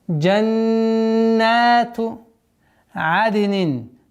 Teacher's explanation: Удерживаем в размере 2 огласовок нун. Назализация полноценная. Потом 2 счета удлиняем.